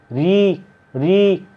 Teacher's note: जीभ क्या हमारी ऊपर को हो जाती है, क्या लगते हैं? मूर्धन्य।